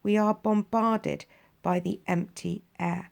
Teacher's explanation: The plosives, that's used here with a B in bombarded. It's a sudden and shocking sound.